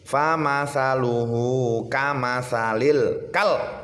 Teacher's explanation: Di sini ada ba ya, posisinya di belakang, maka dia hukumnya qalqalah kubro, harus dipantulkan ya, jangan nanggung-nanggung, harus mantul